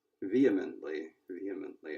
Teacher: they were saying the stress is on the first syllable